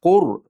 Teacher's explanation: Val qu val qur deb turib qudi dommasini aniq bildiramiz, ro'ni yo'g'on qilamiz.